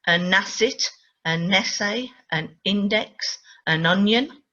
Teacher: the linking between the consonant with n and the e the vowel that starts the next word